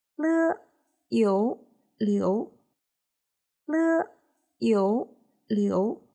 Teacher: The pinyin of character Liu follows the second tone, so it is pronounced as Le, Yu, Liu.